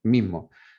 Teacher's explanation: Y luego en Chile también, a veces no dicen la S.